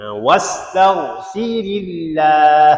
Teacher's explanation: Baca nipis juga. Ha kerana baris sebelumnya kasrah z itu ha dinipiskan kalimah Allah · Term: Lafzul jalalah